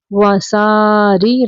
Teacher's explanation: را کے نیچے زیر ہے، را کو باریک پڑھنا ہے